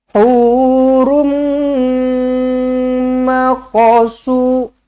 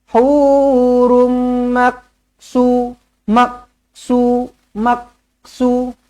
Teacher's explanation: huruf qaf mati jangan ditahan-tahan. Biar lepaskan je. Lantunkan je. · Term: qalqalah sughra